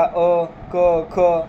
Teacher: कोणत्याच भागाचा स्पर्श कुठं होत नाही आहे, सरळ त्याचा जो उच्चार आहे तो कंठातून निघतोय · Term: कंठवर्णामध्ये